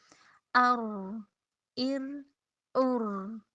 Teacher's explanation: रा जो है ना इसमें थोड़ी तकरार की आवाज़ होती है